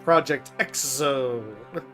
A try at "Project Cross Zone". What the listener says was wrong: That's actually pronounced Project Cross Zone. Project Cross Zone. The cross symbolized as an X.